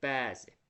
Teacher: Bəzi sözündə əni uzadırıq. Həm də ənin üzərinə vurğu düşür. Deməli, həm uzun sait ədir, həm də üzərinə vurğu düşür ənin.